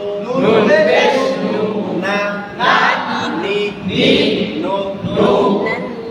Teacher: জিহ্বার আগা তার বরাবর উপরে তালের সঙ্গে লাগাইয়া, নুন সবর না, নুন জের নি, নুন পেশ নু, না, নি, নো।